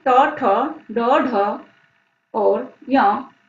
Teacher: इनका उच्चारण स्थान मूर्धा है, अर्थात जीभ मूर्धन्य पार्ट को छूती है